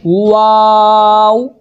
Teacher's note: वाओ दोनों होठों की गोलाई गोल करके पढ़ेंगे